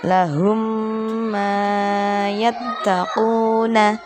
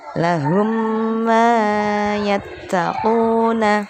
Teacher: Perhatikan huruf yang ada di lingkaran, huruf yang bertanda merah itu ada mim sukun bertemu dengan mim. Cara membacanya didengungkan 1 alif. Suara mimnya seakan bertasdid. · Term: idgham mimi